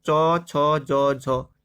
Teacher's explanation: चौ वर्ग जो होता है वो होता है तालव्य